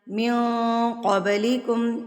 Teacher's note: من پہ موٹا اکفا ہوگا